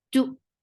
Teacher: As soon as you will touch hamza, your lips should be in a straight position, and your sound should cut off there and then.